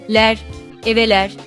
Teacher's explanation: The final vowel of the Turkish word ev, meaning house, is the front vowel e